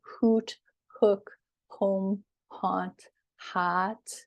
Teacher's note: So these sounds are sort of at the back of your tongue